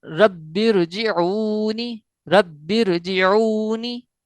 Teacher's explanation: را کے اوپر زبر ہے، اس لیے را کو پر پڑھا گیا ہے۔